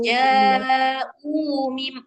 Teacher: U-nya juga panjang, 2 harakat.